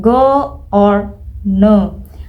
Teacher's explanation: How it sounds overall. It should start with a relaxed sound and glide into a rounded, higher sounds. Your lips will naturally round as you reach the O sound.